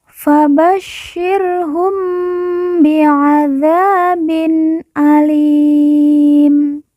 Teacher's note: mim sukun atau mim mati bertemu dengan huruf ba kita baca dengung